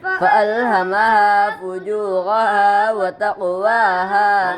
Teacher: قاف میں قلقلہ ہوگا اس لیے کہ قاف قلقلہ کے 5 حروف میں سے ہے